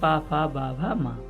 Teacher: तो पा वर्ग में आते हैं पा फा बा भा मा। तो ये हैं स्पर्श व्यंजन